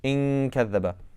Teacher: So when I say in kadhaba, I'm moving the back of my tongue in that makhraj, getting ready to pronounce kaf. So that's the idea of ikhfa.